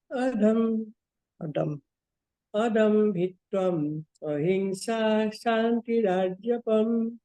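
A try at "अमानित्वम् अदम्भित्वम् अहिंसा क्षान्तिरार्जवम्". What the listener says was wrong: Very good. Next.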